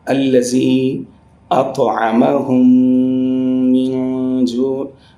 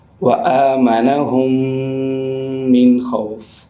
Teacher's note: Whenever there is another meme comes after meme sakin. So both memes shall be merged and there must be ghunna as well. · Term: idgham shafavi